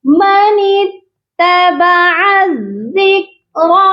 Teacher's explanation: بہت سے لوگ کاف پر قلقلہ کر دیتے ہیں، کاف پر قلقلہ نہیں کرنا.